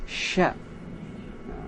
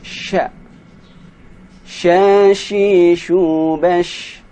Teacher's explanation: Cara mengucapkan huruf shin ini agak sedikit susah. Sya. Suara angin harus menyebar dengan kuat.